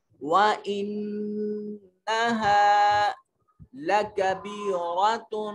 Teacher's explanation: انہ میں نون مشدد ہے, آواز کو ناک میں کے نتنوں میں لے جائیں گے